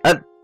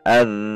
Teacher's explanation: Sifat huruf dzal yang kedua adalah ar-rohawah. Saat huruf dzal sukun dan bertasydid, suara tidak tertahan seperti az.